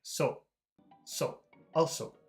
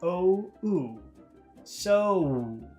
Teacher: pronounced in a very short way so so also but not in English it's a very long very big sound it's two sounds it's o o so see how I give a kiss at